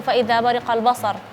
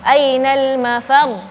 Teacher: di akhir kata terus dia ada tasydid, itu ketika di akhir bacanya harus dinaikin sedikit suaranya. Jadi tadi ainal mafar nggak bisa kita samain sama seperti fa idza bariqal basar.